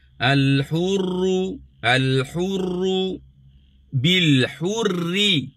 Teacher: Okey, ra pertama tebal. Ra kedua hurri nipis.